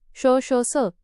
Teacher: यांचा उच्चार करताना मुखातून हवा बाहेर जोराने फेकली जाते आणि घर्षणामुळे उष्णता निर्माण होते म्हणून यांना उष्मे म्हणतात. चार महाप्राण शून्य एक मुख्य अधिक 13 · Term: उष्मे किंवा घर्षक